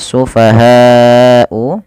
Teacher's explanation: panjangkan lafal bunyi ha sepanjang empat harakat atau lima harakat karena kenapa Karena pada bacaan ini terdapat hukum berupa bacaan mad · panjangkan lafal bunyi ha sepanjang 4 harokat atau 5 harokat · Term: mad wajib muttasil